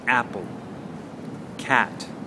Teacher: that is a sound where you keep your mouth very flat and you say ah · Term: flat A sound